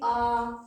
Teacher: 2 ह्रस्व अ के बराबर समय लगता है उच्चारण करने में आ में, दीर्घ अ में। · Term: दीर्घ आ